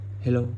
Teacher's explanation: đoạn phát âm từ hello rất rõ ràng, tuy nhiên ngữ điệu chưa chính xác, đã lên giọng ở cuối từ